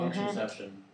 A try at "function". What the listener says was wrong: It's not functionception, it's fun. You're using too much syllables.